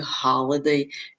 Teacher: Então, eu já falei ali que ele é longo, que ele é mais agudo. Então, ali quando eu digo holiday, ele vai cair na primeira, então, a ênfase vai estar ali no holiday